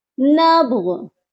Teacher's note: نون با زبر نب، با جو ہے حروف قلقلہ ہے اور یہاں پر یہ ساکن ہے تو یہاں پر قلقلہ لازمی کریے گا